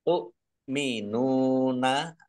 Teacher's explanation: Tu minuna ya hamzah, tu minuna ringan beda dengan ain ya.